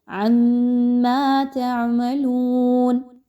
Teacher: واو مدہ ہے، 2 حرکات کے برابر اس کی ادائیگی رکھیے